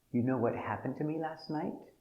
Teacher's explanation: And the accent goes up at the end for a yes or no question.